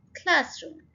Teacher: अगेन 2 syllable word है और first syllable के ऊपर हम स्ट्रेस डाल रहे हैं